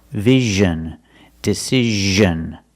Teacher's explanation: it's the same position as sh like wish and fish sh sh but you make a voice you make vibration make vibration here that's the sound we want Vision decision and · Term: z sound